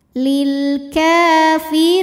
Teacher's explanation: maka huruf Kaf ini kita panjangkan Cukup dua harakat saja lilkafiri huruf ro dibunyikan secara tarqik sebab D berbaris kasrah dibacanya tipis